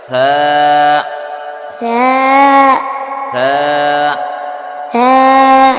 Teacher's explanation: জিহ্বার আগা সামনের উপরে 2 দাঁতের আগার সাথে লাগায়া সা।